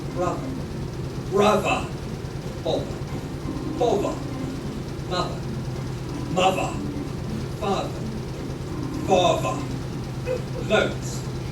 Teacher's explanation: Those TH sounds will be replaced by a V sound.